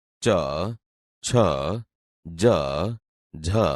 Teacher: આપણી જીભ તાળવાને અડે છે, તેથી તે તાલવ્ય વ્યંજન છે.